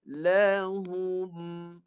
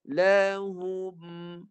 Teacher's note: Itu isu dia. Jadi lepas rapat bibir saya tambah satu lagi, tekan di hidung baru dapat bunyi jelas mim mati